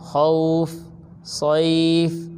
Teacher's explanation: حروف لین کو پڑھنے کا طریقہ: حروف لین کو نرم آواز کے ساتھ جلدی سے معروف پڑھتے ہیں، اور حروف لین کو آدھے الف کے برابر کھینچ کر پڑھتے ہیں، اس سے زیادہ نہیں کھینچتے